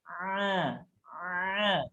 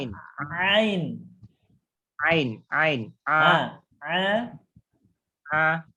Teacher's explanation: Huruf A itu tengah tenggorokan, disempitkan, Pak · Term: huruf Ain